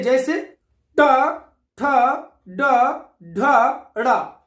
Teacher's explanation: जब जिह्वा की उल्टी हुई नोक का निचला भाग मूर्धा से स्पर्श करता है, ऐसी स्थिति में उत्पन्न ध्वनि को मूर्धा व्यंजन कहते हैं।